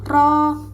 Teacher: Ro yang dibaca tafhim karena ro yang berharakat fathah